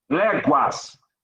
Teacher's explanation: O U, ele é pronunciado. Léguas. Aí é um ditongo, não é um dígrafo.